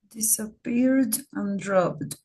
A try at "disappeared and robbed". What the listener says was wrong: Okay. Yeah, good.